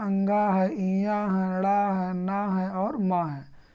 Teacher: है और म है को नासिक भी कहा जाता है क्योंकि इनका उच्चारण मुख के साथ नासिका से भी होता है